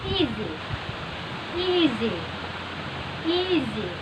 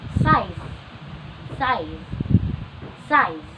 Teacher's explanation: this sibilant is made through forcing the air stream through the narrow opening of your mouth at the same point, the tongue and the alveolar ridge. So the distinctive hissing sound or the effect of the sibilant is caused by the tongue being glued.